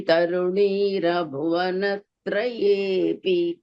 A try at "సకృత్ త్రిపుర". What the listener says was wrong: it should be pronounced అస్ half letter then సకృత ఇట్స్ సకృత్ త్రిపుర not సకృత త్రిపుర